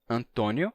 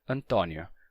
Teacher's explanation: no Brasil se pronuncia com o fechado e se escreve com acento circunflexo Antônio mas em Portugal esse mesmo nome se escreve com acento agudo e se pronuncia Antonio com o aberto